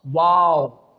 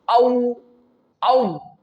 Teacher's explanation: when we pronounce the letter waw, our both lips get rounded. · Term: rounding of our lips